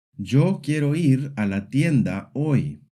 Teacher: Some words get stretched out, others shrink. Spanish, on the other hand, is syllable-timed. Each syllable is given about the same length.